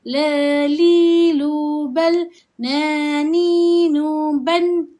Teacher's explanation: kedua-duanya huruf istifal, di mana kita kena rendahkan bacaan kita